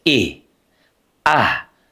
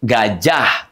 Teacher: huruf H itu sekali lagi aqsal halqi. Dia di tenggorokan terjauh.